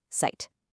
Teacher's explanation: the Z is a sharp T sound, kind of like the end of the word cats